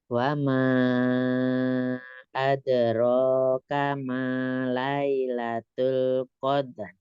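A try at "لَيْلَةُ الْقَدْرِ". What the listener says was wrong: Bagus, mau taknya ada hamas, kasih sedikit ya, karena tak itu ada syiddah dan hamas. Jadi kalau ini tadi terdengarnya hamas. Lailatul qadar. Lailatul qadar.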